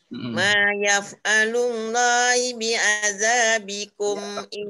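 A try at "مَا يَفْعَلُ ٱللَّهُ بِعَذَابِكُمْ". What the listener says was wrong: Allahu. Ha, baris depan.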